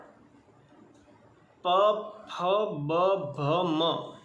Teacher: और प, फ, ब, भ, म यह सारे वर्ण दोनों होठ के स्पर्श से हम बोल पाते हैं।